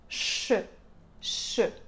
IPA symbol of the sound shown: ʃ